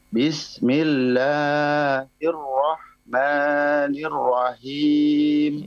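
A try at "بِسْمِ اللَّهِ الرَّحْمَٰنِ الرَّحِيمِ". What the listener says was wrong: Ya, bismillahnya afwan. Bismillahirrahmanirrahim. Nah, 2 harakat saja ya. Jangan bismillahirrahmanirrahim kepanjangan.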